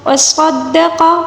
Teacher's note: صاد کو پر پڑھیں گے، دال کے اوپر جو تشدید ہے اس کو مضبوطی کے ساتھ پڑھنا ہوگا